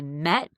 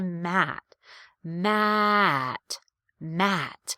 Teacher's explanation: when i say met i can rush through the vowel a little bit more but when i have to say matt matt matt i really feel that change in pitch that step down like you're stepping down a set of stairs within the vowel